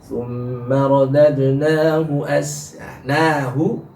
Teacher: Dalam surat At-Tin, summa radadnahu nahu, nanya, hu-nya diselingi oleh na dulu yang sudah panjang bacaan matobinya, jadi hu-nya hilang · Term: hak kinayah